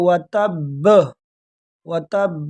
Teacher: یہ جو با ہے یہ حروف قلقلہ میں سے ہے، اور حروف قلقلہ کو تھوڑا جھٹکے کے ساتھ پڑھتے ہیں